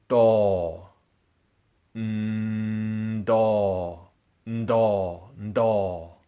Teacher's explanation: It begins with an N held out, and it glides into a D sound. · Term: N sound